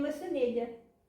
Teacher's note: uma coisa que era a característica do latim aqui da zona e de Espanha também, que era a palatalização de dois Les